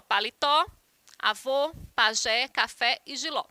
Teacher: Por serem palavras oxítonas, onde a sílaba tônica é a última.